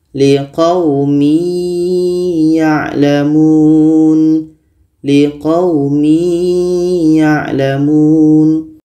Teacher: adalah huruf idgham bhunah maka tanwin ini kita masukkan ke ya Masuknya tanwin kepada ya tidak sempurna kita baca liqumi yalamun liqaumi yalamun tidak sesempurna idgam Kamil tadi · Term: idgham naqis